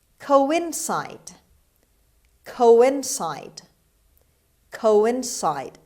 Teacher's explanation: The stress is on the third syllable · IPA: /ˌkoʊənˈsaɪd/